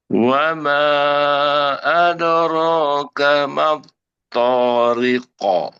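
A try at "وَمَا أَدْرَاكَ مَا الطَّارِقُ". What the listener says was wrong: Bagus Bu ya, disempurnakan wamanya tambah dikit lagi panjangnya.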